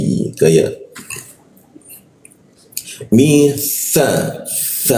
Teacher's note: karena lidahnya menempel gigi dia hembusannya agak terhambat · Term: huruf tsa